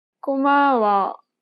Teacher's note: She kept the same pitch for the first and second syllable, but lowered the tone for the last syllable.